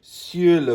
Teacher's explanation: there's a Y sound in the sur. You pucker your lips and make a face like you just tasted lemon.